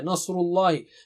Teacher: لفظ اللہ کا لام موٹا ہے لیکن یہ جنرلی نیچرلی آ جاتا ہے۔